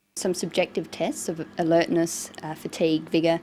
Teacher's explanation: she uses rising and falling tones and a tone that's neither rising nor falling just a flat tone for the items in the list this tells the listener that she hasn't finished her list of